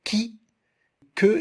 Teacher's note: dorsopalatal devant des voyelles d'avant, qu'on appelle voyelles antérieures, comme I, E, exemple, qui, que, elle est prononcée à l'avant de la bouche.